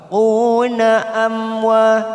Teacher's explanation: Una amwa mim sukun bertemu wa. Mim sukun bertemu waw kita baca jelas tanpa mendengung idhar safawi.